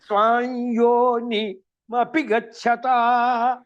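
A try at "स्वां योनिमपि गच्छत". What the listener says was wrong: దీర్ఘాన్ని చెబుతున్నారు. స్వాంయోని అంటున్నారు.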